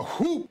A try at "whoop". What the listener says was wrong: Again, though, there's no H in whoop.